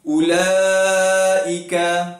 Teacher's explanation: Huruf mat dekat sini ialah alif. Alif bertemu dengan hamzah dalam satu kalimah, ulaika. Jadi bila dalam satu kalimah, maka dipanggil mat wajib muttasil dan kadar bacaannya ialah dipanjangkan 4 ataupun 5 harakat.